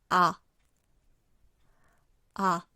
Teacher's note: it's pronounced with your mouth wide open and in the back of your mouth